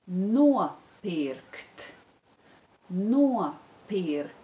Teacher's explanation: there is the diphthong oh ah in the first syllable